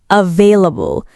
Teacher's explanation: เสียงvในคำavailableที่ต้องใช้ฟันบนแตะริมฝีปากล่างไม่ใช่เสียงวแหวน